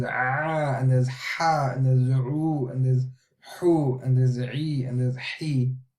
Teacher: So you can hear the pressure that comes from the throat.